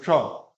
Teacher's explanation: जीवा को ट्विस्ट करके ऊपर लगाते हैं मूर्धा पे। मूर्धा मतलब है जो थोड़ा सा खुरदरा पार्ट है। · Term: मूर्धन्य